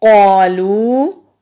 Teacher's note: قاف حروف مستعلیہ ہے، موٹا پڑھیں گے اور الف مدہ بھی ہے، ایک الف کے برابر لمبا بھی ہوگا۔